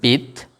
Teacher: যেমন লক্ষ্য করুন, বিদ্যালয় শব্দ উচ্চারণকালে আমরা প্রথমে উচ্চারণ করছি বিদ। বিদ যেহেতু আটকে যাচ্ছে সুতরাং এটি বদ্যাক্ষর হবে